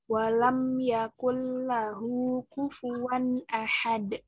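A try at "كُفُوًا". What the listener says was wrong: Fu. Jelaskan suara F-nya, Fa-nya. Fu.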